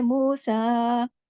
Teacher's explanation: मूसा इस पे देखें खड़ी जबर है और मद है। और रा मोटा पढ़ा जाएगा जबर की वजह से।